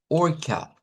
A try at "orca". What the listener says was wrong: Más suave porque esa A es muy abierta, tiene que ser más cerradito.